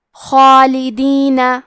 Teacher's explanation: ہم مد الف کو بھی بھاری آواز میں ادا کریں گے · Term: حروف التفخیم